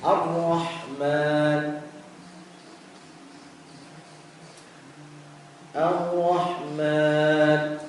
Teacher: Jadi ha di sini, ya, harus, ya, dikecilkan dalam arti seperti orang yang kepedesan, ya. Ar-Rahman, Ar-Rahman, panjangkan.